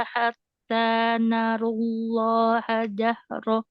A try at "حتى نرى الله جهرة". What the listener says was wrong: Naro bukan naru. Hatta narallaha jahroh. Jahroh.